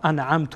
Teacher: انعمت اینجا نون اظهار میشه چون بعد از نون ساکن عین آمده